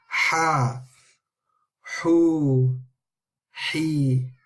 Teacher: It's from the middle of the throat with the air coming out.